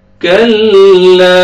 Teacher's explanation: काफ को लाम के साथ मिलाएंगे, काफ को बारीक पढ़ेंगे, अलिफ मद्दा, अलिफ से पहले फतहा, लाम को आपने खींचना है।